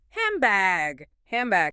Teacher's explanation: So while you're still saying hand, your lips close early. Because your lips are closed, the N sound turns into an M sound, and the dead gets crushed entirely.